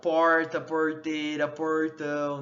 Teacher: a consoante retroflexa, ela envolve a resistência parcial à passagem do ar, porque a língua vai se curvar, né, da ponta sobre o corpo da língua. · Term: R caipira